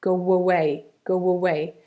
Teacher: we would probably add a w sound to make the link between go and away.